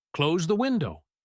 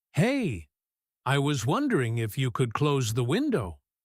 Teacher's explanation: he might add a little filler word at the beginning and drop his voice to sound less demanding.